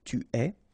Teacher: Okay, so je suis, final S not pronounced, tu es, okay, so it's quite strange because you get this ES, but then phonetically it's est, alright, quite open